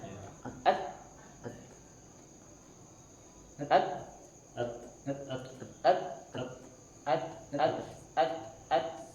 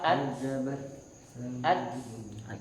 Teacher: Kalau tak itu percikan, kaf sama tak hanya percikan saja.